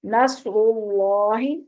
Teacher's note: यहाँ स्वाद भी पुर है, रा भी पुर है और अल्लाह का लाम भी पुर है